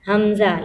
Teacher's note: حمزہ اور ہا جو سینے کے قریب حلق ہوتا ہے وہاں سے ادا ہوتا ہے۔